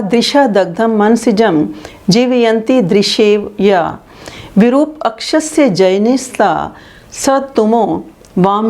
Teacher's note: श वर्ण, ज वर्ण, य वर्ण, श वर्ण और ज और य वर्ण, इनका उच्चारण स्थान क्या है? हमारा तालु है।